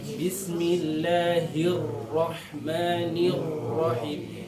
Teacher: yang kurang sempurna hanya di sifat getarnya saja makhrajnya dapat sifat yang enam dapat takrirnya pun dapat hanya sedikit berlebihan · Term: dilebihkan getarannya